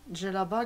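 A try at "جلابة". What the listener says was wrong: Djellaba, ça n'existe pas au Maroc. C'est djellaba. Dès que vous voyez D avant le J, c'est du dialecte algérien.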